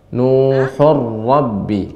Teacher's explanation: Ketika tanwin ketemu dengan ra, idgham bila gunna pada ra, ra-nya dibaca dengan tebal.